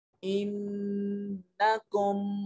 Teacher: آواز کو ناک میں لے جائیں گے ، یہاں غنہ ہوگا، انکم ظلمتم انفسکم، انفسکم باتخاذکم العجل، خا